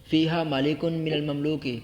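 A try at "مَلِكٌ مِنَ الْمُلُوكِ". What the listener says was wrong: مملوک نہیں پڑھنا من الملوک.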